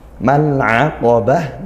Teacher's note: mal'a ini izhar qamariyah, al bertemu huruf ain lagi, kemudian al-aqabah ini qafnya kuatkan, dan di akhir tak marbutah ini juga dibaca ha karena dia dibaca waqaf.